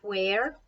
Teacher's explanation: Where has a slightly more blowy beginning sound.